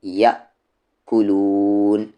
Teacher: حمزہ ساکن ہو تو جھٹکے کے ساتھ پڑھیں گے